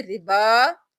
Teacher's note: इसको हम 4 अलिफ के बराबर खींचेंगे